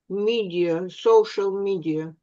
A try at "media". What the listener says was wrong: О, pronunciation, да, то есть это не медиа, да, а media, media.